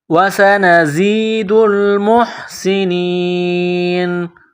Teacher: زا میں سیٹی کی آواز پیدا کرنی ہے، زا کو پڑھتے وقت دانتوں کو ملانا ہے سختی · سین میں سیٹی کی آواز پیدا کرنی ہے